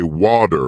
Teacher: In American English, people might say water with a D sound, while in British English it's often watu with a T sound.